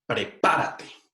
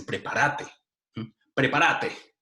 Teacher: con el acento en la sílaba pa es una palabra esdrújula